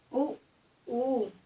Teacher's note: जीभ के पिछले हिस्से का प्रयोग हो रहा है